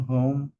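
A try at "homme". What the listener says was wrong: জন হোম না, আশ silent না ফরাসিতে সবসময়, তাহলে ওম, লাস্ট লেটারে তো সাইলেন্ট থাকবে ন্যাচারালি, তাই না? তাহলে ওম লেখা আছে।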